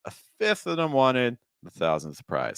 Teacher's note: if we're doing higher pitch on our first thought group, a fifth of them wanted, then our next thought group, we want to go lower, the thousandth prize